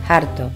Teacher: Pronunciación de la H inicial con una fuerte aspiración.